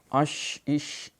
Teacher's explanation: ششکار ہے، اس میں تفشی اس کی صفت ہے